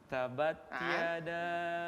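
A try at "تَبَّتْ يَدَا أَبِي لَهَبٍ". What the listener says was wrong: Ada tas di huruf ba. Tabbat yada abi. Tabbat yada.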